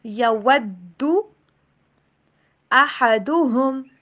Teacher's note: واؤ کے اوپر ہونٹوں کو اگین گول کیجئے